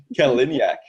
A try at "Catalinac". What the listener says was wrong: It's Catalinac. As it's spelled, it's exactly how it's spelled. I think you put 2 I's into that.